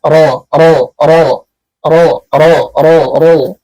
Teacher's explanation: Sifat takrir, dan dia punya getaran, dan getaran ini cukup hanya sampai 2 kali getaran saja.